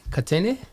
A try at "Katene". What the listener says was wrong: Katene. I think you just need to hold the A little bit longer.